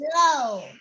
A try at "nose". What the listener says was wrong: Nose. Không phải low. Nose. Nghe ra âm N không?